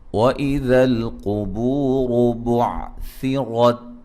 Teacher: قاف کو موٹا ادا کریں گے، را کو موٹا ادا کریں گے، بو و مدہ ہے، را کو موٹا ادا کریں گے، ٹھیک ہے۔